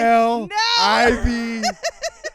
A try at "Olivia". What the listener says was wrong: That is Aliva. It's Olivia with an O.